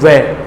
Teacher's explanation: वे होठ बाहर निकलते हैं, जीभ है वो दांतों को छूती है, इसलिए इनको कहते हैं दंतोष्टे हैं।